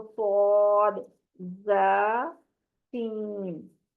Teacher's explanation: ठीक है, इसको हमने पुर करना है, बाकी जा और सीन को बारीक पढ़ना है। सीटी की आवाज तीनों में आएगी, सिर्फ स्वाद की आवाज में मोटापन होगा · ये तीनों हरूफ जुबान की नोक को ऊपर नीचे के दो दो यानी सामने वाले चार दांतों के अंदरूनी किनारों के करीब करने से अदा होते हैं। जुबान की नोक और ऊपर नीचे के सामने वाले दांत, ये तीनों चीजें इन्वॉल्व होती हैं, तो ये सौद जा सीन अदा होता है। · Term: सीटी वाले, सीटी वाले हरूफ